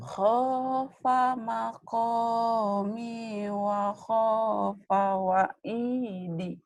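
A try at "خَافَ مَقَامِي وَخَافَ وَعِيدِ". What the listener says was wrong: Bagus.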